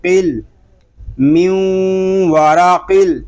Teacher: اس کو قل اس طرح نہیں پڑھیں گے، نون لام ساکن ہے اور لام ساکن کے سکون کو ہم ہلائیں گے نہیں، سکون کے ساتھ ادا کریں گے